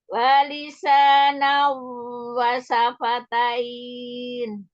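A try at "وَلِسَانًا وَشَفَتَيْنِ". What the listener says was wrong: Oke, huruf shin. Walisanan wa syafatain.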